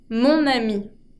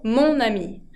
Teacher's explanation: Mon ami puedo unir con la N y así me queda más fluida la pronunciación. En vez de ma ami, digo mon ami. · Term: liaison